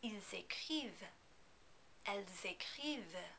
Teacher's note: You need to pronounce the S on the end of il and on the end of elle, even though you usually don't, because écrire begins with a vowel sound.